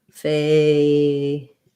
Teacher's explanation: First syllable stress, A diphthong, and then your flap T plus your syllabic L, dull. So that's not super easy.